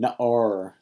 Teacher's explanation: instead of stressing their last syllable, they're stressed on their first syllable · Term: Segolet